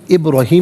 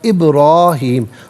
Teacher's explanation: را کو تھوڑا سا ایک الف کی مقدار کھینچ کر پڑھیں گے